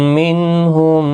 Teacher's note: مع الغنہ ہوگا، غنہ کے ساتھ پڑھیں گے، نون کے بعد نون ساکن کے بعد ہا اظہار حلقی ہوگا، غنہ نہیں ہوگا نون ساکن پر